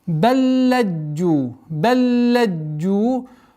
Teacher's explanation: Здесь у нас так называемый идгам кабир, когда лям ассимилируется во второй лям